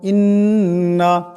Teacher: এখানে নুন মুশাদ্দাদ আছে, নুন মুশাদ্দাদকে এক আলিফ পরিমাণ গুণনা করিয়া পড়তে হবে